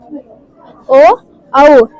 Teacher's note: కంఠోష్టములు అనగా కంఠము మరియు పెదాలతో పలికేవి